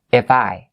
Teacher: And it's the F sound. It's not the V sound.